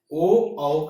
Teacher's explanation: आठवां है उदातो कंठोष्टम। ओ, औ का उच्चारण स्थान कंठ और ओष्ठ है।